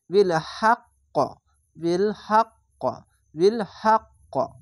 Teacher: শেষ অক্ষর সাকিন দিলে কলকলা হয়ে যায়, তার জন্য কলকলা হবে।